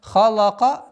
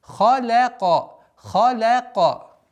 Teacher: Лям мягкий звук между двумя твердыми звуками.